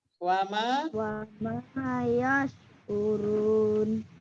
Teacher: Minimal yang paling pas itu 4 harokat. Lebih boleh ya.